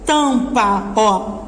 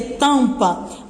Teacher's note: a gente vê que o M aqui não tem o som do M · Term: dígrafo vocálico